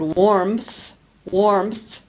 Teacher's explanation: add an additional consonant when we pronounce the word warmth warmth we add a p to make it easier to pronounce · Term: epenthesis